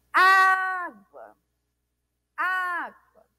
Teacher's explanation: Paroxítona, né? Onde a penúltima sílaba é a sílaba mais forte.